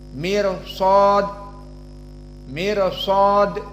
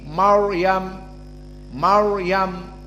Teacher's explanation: Ro-nya di sini mirsad muraqqaqah, Maryam mufakhamah. Dan shad di sini dari huruf at-tafkhim, yang mana seperti disebutkan oleh Ibnu Al-Jazri, khussa dagtin kil.